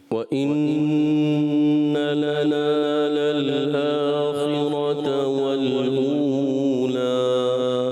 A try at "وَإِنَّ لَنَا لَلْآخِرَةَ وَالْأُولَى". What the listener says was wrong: خا کو پر رکھنا ہے. وَإِنَّ لَنَا لَلْآخِرَةَ وَالْأُولَى